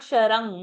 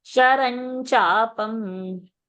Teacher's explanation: No ng. It's not Ganga's ng. It is not ka varga. It is cha varga.